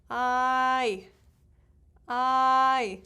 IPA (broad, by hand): aɪ